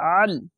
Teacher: আইনটিকে মোটা করে গলা চিপে পড়বেন